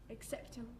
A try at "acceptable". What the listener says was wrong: Yes.